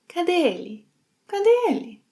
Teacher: when speaking she links 'cadê' and 'ele'